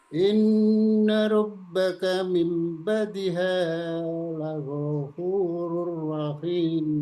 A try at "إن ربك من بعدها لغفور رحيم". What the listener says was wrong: Ya, cukup dulu. Pak Haji bagus.